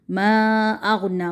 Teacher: حمزہ کو غین کے ساتھ پکڑنا ہے، جھٹکا نہیں دینا